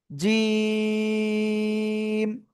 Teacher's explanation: জিহ্বার মধ্যখান, এই যে খেয়াল করেন সবাই, মধ্যখান তার বরাবর উপরে তালুর সাথে লাগিয়ে আমরা 1 2 3 আলিফ টেনে পড়বো।